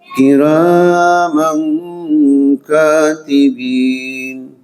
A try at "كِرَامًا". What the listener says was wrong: Roknya kurang dikit panjangnya. Kiram.